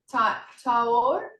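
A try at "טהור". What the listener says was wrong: Tahor, tahor, because it's a H sound. The hey, the hey. Yeah, tahor.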